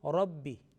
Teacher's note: it's Ra, little bit mufakham and with heavy quality